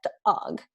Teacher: the vocal folds are spasming when they're coming together